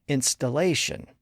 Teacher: But when we convert it into a noun, the stress shifts around and becomes installation. The stress shifts to the first and third syllables with the primary stress on the third syllable.